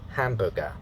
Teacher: the stress pattern and the pitch pattern is the stress syllable falls on the first syllable here